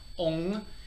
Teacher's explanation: O-N-G, Ong, resonates up in the sinus